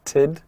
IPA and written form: təd (ed)